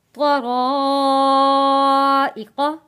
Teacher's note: بڑا مد ہے یہاں پہ ہم نے 4 الف کے برابر مد کو کھینچ کر پڑھنا ہے